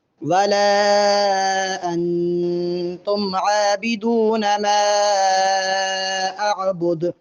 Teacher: دال کو وقف میں ساکن کریں گے، اس لیے دال پہ قلقلہ بھی ہوگا۔